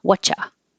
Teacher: So dropping the R, making what you, and making the T and the Y into a cha, and making you into a ya